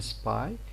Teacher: the auditory point of view confirms the fact that pe in spy is like b · This P here is unaspirated in spy here. We know, as a rule in English, P, when it is found after S, it's not going to be aspirated.